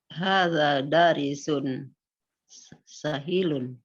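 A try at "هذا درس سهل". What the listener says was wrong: Hadza Nah, itu dibacanya bukan dari sun tapi darsun. Darsun itu dirosah ya, di pelajaran darsun. Darsun sahlun. Darsun sahlun.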